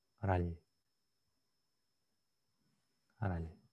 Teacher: Это не Рал, а именно Л с мягким знаком.